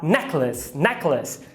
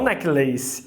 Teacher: A primeira é a tônica, neck. E a segunda é átona. Se é átona, é um schwa, necklace, necklace.